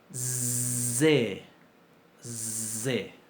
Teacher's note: Si a la S, que es sorda, le pongo acción de las cuerdas vocales, es, me queda una zain.